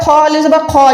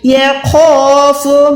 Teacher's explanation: خا زبر خا، یہ پورا پر موٹا ہے، یہ خاف نہیں ہے، یہ خوف.